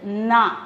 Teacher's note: அந்த நாவ நுனி நாக்கு கடிச்சு தான் உச்சரிக்கணும்